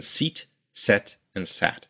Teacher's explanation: your tongue starts up high e then goes to the middle of your mouth e and then goes down to a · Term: tongue placement